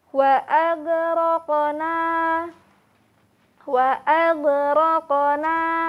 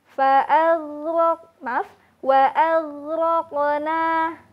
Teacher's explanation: huruf ghin tidak disertai dengan adanya pantulan suara